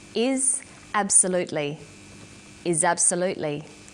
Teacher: in conversation we link the final consonant sound with the initial vowel sound